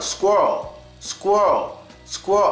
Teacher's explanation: we don't really make an l sound because the way we say it in America I can say it and not even lift my tongue